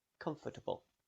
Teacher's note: the o r after f could be pronounced with a schwa sound comfortable but it often isn't pronounced at all you link directly